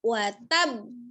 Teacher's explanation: ditekan di huruf ba, kemudian dilepas setelah ada jeda sedikit dipantulkan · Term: qalqalah besar